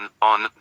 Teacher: is nasal and uses that rounded lip